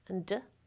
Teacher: two alveolar stops